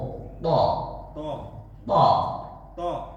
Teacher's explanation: Lebih ke A sedikit lagi, Pak. Jangan terlalu O.